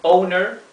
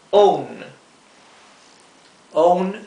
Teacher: en general se pronuncia ou